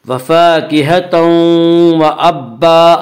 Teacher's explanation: لام اور را میں ادغام بلا غنہ ہوگا، جسے ادغام تام بھی کہتے ہیں، اور یومنو کے 4 حرف میں یعنی یا، واو، میم، نون، ان 4 حرفوں میں ادغام بالغنہ ہوگا، اور یہاں تنوین کے بعد یومنو کے 4 حرفوں میں سے واو آ رہا ہے، اس یہاں پہ ادغام بالغنہ ہوگا